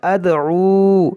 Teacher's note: دیکھیں بغتتوں، بغتتوں یہاں پر ادغام کریں گے، یہاں بڑی شین ہے، لا یشعرون، قل هذه سبیلی ادعو الی اللہ، دیکھیں ادعو یہاں دال میں قلقلہ کریں گے، یہاں واو، یہاں دال میں قلقلہ کریں گے، یہاں عین ہے تو اس کو وسط حلق سے ادا کریں گے